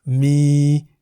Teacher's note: Mi begins with a low-class consonant moma, and therefore based on the tone rules for a live syllable, mi is in the middle tone